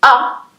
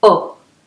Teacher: so you might be able to hear that when I say ah says oh